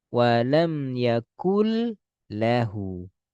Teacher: Nun sukun kita lebur ke lam. Contoh nih yakun menjadi yaakul nan nun langsung rubah jadi lam. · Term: idgam bila ghunah